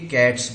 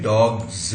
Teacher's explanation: एस को हम यहां पर स्पेलिंग में देख रहे हैं, मगर कैट में एस जोड़ के कैट्स बनाया, प्लूरल बना, तो बोलने में कैट्स आएगा। मगर डॉग को प्लूरल किया एस लगा करके, तो बोलने में डॉग्स आएगा, ये ज है, ये डॉग स नहीं हो सकता।